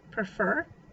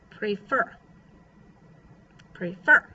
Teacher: unstressed syllable followed by stress syllable